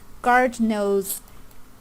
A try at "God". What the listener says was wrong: God, not guard. God.